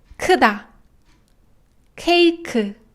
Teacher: kyo korean clean sound is quite easy because it's very similar to english k sound it's completely aspirated